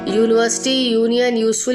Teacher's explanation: यूनिवर्सिटी, यूनियन, यूजफुल में यू की आवाज़ वाई पहले आ रही है